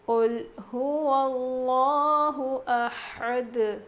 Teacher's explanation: یہاں پر لفظ اللہ کے لام سے پہلے زبر ہے، اسی لیے میں یہاں لفظ اللہ کے لام کو موٹا پڑھ رہی ہوں۔